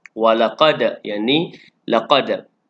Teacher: Dal yang sukun adalah hukumnya qalqalah sughra, berdetak kecil.